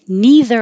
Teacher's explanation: neither with a voiced th